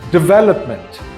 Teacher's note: So it's pronounced development, with the second syllable being stressed the most. Again, this word is pronounced development.